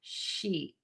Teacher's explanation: [snorts] So I always say think about loving a sheet of paper so much that it makes you smile because when you smile your mouth will be nice and tense. The tip of your tongue will be really high and flat in the mouth. And then make that vowel really long. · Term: long e sound